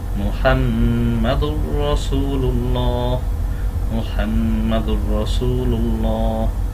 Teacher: দাল দুই পেশ দুন হওয়ার কথা ছিল, কিন্তু তাসদিদ আসার কারণে তানবিনের পরে তাসদিদওয়ালা র, এই জন্য মিলিয়ে পড়বো কিন্তু গুণনা করবো না।